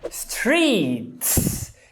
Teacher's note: E por que com o som de S? Porque o T é desvozeado, logo você coloca outro desvozeado